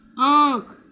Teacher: गूंज, गूंज, तो चंद्र बिंदु इस पे आएगी, अनुस्वार नहीं आएगा, चंद्र बिंदु आएगी। आँख, तो देखिए बोलकर उसमें चंद्र बिंदु की आवाज़ आ रही है, अनुस्वार की नहीं